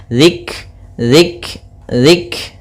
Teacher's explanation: kafnya ini punya sifat namanya sifat hamas, yaitu aliran nafas kita atau jaroyanun nafas